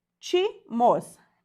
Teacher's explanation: Antepenúltima sílaba mais forte, novamente uma proparoxítona.